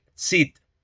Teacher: Aquí deberíamos decir Cid, es decir, pronunciando el africado alveolar sordo. Recuerden que la C con cedilla hace referencia al africado alveolar sordo.